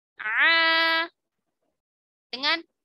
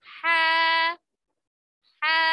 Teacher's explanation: Ain dia terasa tekanannya ya pada lisanul mizmar. Nah, sekarang ha. Ha dia lebih lembut ya. Tidak seperti ain tekanannya.